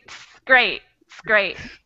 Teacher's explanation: The T and the S sound is usually what's kept, and the rest might get taken off.